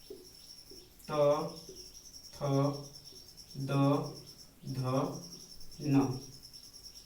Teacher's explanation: त वर्ग इसका दंत से होता है।